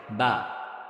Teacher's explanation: বা হবে এই ঠোঁটের ভিজা অংশ থেকে